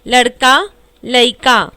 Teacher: इसमें शब्द के मध्य की ध्वनि का लोप होता है